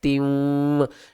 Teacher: تا واو دو زیر تیوں، یہاں پر کیا ہو رہا ہے؟ گنہ ہو رہا ہے، آگے حروف یرملون میں سے واو آ رہا ہے